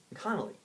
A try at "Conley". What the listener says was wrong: It's Conley, not Connolly. You're saying you're putting a syllable after the N. No, Conley. It's like 2 separate.